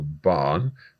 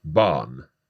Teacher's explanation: You're almost not hearing the R at all there. - Yeah, the N is like very pronounced in that case.